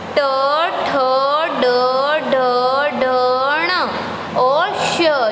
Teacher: ये है मूर्धा से आवाज़ आती है और मूर्धन्य कहते हैं इसको।